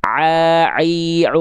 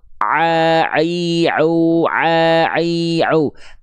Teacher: Ain itu enggak berpengaruh ketika ditutup hidungnya. A i u. Bahkan ditutup terus pun enggak berpengaruh.